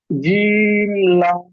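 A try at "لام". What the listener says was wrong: Clear আসছে না, clear আসছে না। লাম তিন আলিফ টান হবে, লাম।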